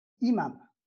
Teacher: la hamza chute et on garde sa voyelle, la voyelle I